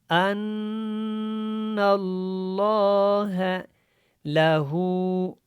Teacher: الٹا پیش کی وجہ سے اس کو ہم نے لمبا کیا، اگر دوسرا پیش ہوتا تو اس کو لمبا نہیں کرنا تھا۔